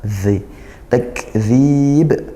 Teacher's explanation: dzal seperti tsa makhrajnya ujung lidah bertemu ujung gigi dari atas